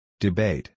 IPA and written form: dɪˈbeɪt (debate)